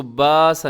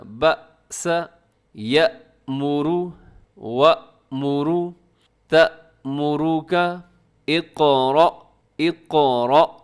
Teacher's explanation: جزم جب حمزہ کے اوپر آتی ہے تو حمزہ کو جھٹکے کے ساتھ ادا کیا جاتا ہے